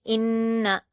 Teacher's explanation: نون مشدد ہے تو پیچھے سے ملا کر پڑھیں گے اور نون پر غنہ کریں گے